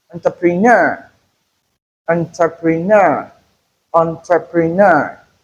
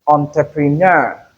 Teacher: The stress is on the last syllable. So the last syllable must be emphasized when it is articulated.